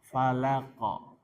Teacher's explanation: Fa ujung gigi seri atas ujung gigi seri atas dengan bibir bawah bagian dalam. Fa falaqo qafnya sukun maka dia qalqalah pantulkan